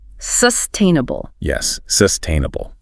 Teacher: The stress falls squarely on the second syllable.